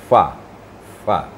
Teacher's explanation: angin keluar dulu baru diiringi dengan suara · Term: makmus